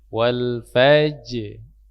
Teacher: Fajr, waktu di ra-nya itu dibaca tebal waktu sukunnya.